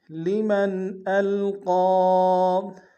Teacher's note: لمن القى میں قاف کے اوپر کھڑا زبر ہے اور مد منفصل ہے، کم سے کم دو الف مقدار میں کھینچیں گے